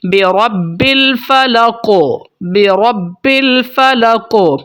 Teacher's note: قاف کے اوپر وقف کیا جا رہا ہے تو یہاں پر قلقلہ کریں گے، حرکت دیں گے، ہلائیں گے قاف کی آواز کو